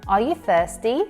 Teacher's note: Rising intonation, the rise in the voice from a very low pitch to relatively very high pitch on the last stressed syllable